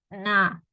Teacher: I was closing my nose the sound is very nasally